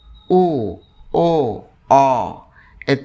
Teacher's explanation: পশ্চাৎ জিহবার গোড়ার দিক থেকে উচ্চারিত হয় এবং উচ্চারণের সময় ঠোট গোল হয়ে যায়। উ ও অ তিনটা পশ্চাৎ উষ্ণাদর গোলাকৃত স্বরধ্বনি।